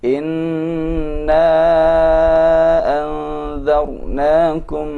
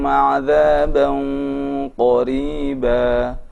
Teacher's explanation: Bedakan antara anzar dengan 'adzaban qariba. Terasa sekali pada anzarnakum suara ikhfa terdengar dengan muraqqaq